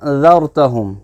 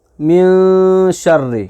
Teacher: اخفا میں آواز گونجتی ہے اور گنہ میں ناک میں آواز بالکل کمپلیٹلی بند ہو جاتی ہے۔